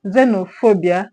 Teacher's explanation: The stress syllable should be on phobia, okay, because that's the main word.